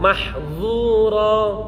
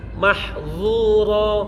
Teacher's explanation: Ingat ini dha, maka pangkal lidahnya harus naik.